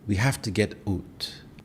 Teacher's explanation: Out is pronounced as oot or eat depending on the region.